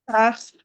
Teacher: The ain, you restrict the passage of the airflow from the throat.